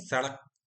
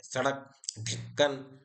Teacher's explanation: ड जैसे सड़क पढ़ते हैं ना सड़क तो क्या कहते हैं? जीभ जो है झटके से तालू को छूती है। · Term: उत्क्षिप्त व्यंजन